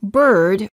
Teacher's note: the lips are slightly rounded the tongue is tense and at a mid-level position and the tip of the tongue is curled up and pulled back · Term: er sound